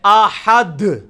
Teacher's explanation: احد دال پہ جا کے اور پھر واپس لوٹے گی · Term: قلقلہ